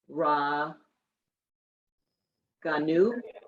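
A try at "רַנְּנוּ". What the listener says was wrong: Ne. That's a nun. Raninu.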